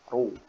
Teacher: rok dhammah itu dia dibaca tebal, tafkhim, mufakhamah, ru ya. Jadi bukan dibaca ru tapi ru ya, ru ya, diangkat pangkal lidahnya.